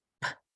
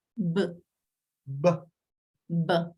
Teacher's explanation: You see that it is the same position of the mouth. They are like twins, but the difference is the vibration. Look, P, B, P, B, P, B.